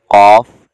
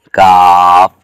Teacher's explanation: اس حرف کی ادائیگی میں یہ اس بات کا خیال رکھا جائے کہ بچے کے ادا کرتے ہوئے حرف کی آواز موٹی نہ ہو، آواز موٹی ہو رہی ہے تو قاف، اور آواز باریک ہو رہی ہے سخت جگہ سے لگنے سے تو کاف ادا ہوتا ہے